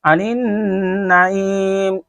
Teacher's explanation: نون کے اوپر تشدید آنے کی وجہ سے غنہ پڑھ رہے ہیں